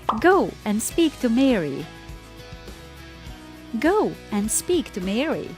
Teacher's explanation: to Mary right I stretch the word go speak Mary but I didn't stress these little words between the main words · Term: stress pattern of sentences